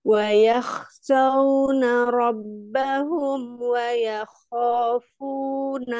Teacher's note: Mim sukun ketemu dengan wawunya izhar, tapi ditawasutkan mimnya.